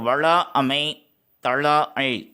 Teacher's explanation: அவ்வாறு இருக்கும் பொழுது இதனுடைய அளவினுடைய ஒழிப்பு முறை நீண்டு ஒழிக்கும் பொழுது அதனுடைய மாத்திரையினுடைய அளவு அதிகரிக்கும். இப்போ வளா அமை தளா அள் என்று நீண்டு ஒழிக்கும் பொழுது 2 மாத்திரை அளவில் ஒழிக்கக்கூடியது 3 மாத்திரையாக மாற்றமடையும். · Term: அளபெடைகள்